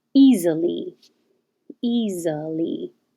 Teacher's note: That looks like an S but sounds like a Z.